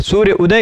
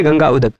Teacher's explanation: यहाँ सूर्य में अ ह्रस्व है, गंगा में अ दीर्घ है